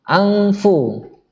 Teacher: Berarti dengung. Lidah kita nggak membentuk nun, tapi langsung masuk ke fa. Lidah kita atau bibir kita langsung masuk ke fa, yaitu bibir bawah bersentuhan dengan gigi atas. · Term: ikhfa hakiki